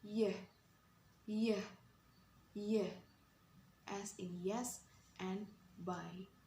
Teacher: Jadi kita mengangkat lidah ke langit-langit mulut dan menyempitkan aliran udara. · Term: palatal